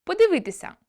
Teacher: наближення першого та третього и до е в ненаголошених позиціях